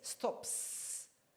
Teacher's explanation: the S will remain as S, as in S-T-O-P-S, stops, like that, because the P, the final sound there, P, is voiceless.